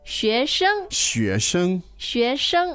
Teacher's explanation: 学 生 tones are Second and first.